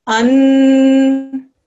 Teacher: Noon sakin, we're going to do ghunna on it for a few seconds.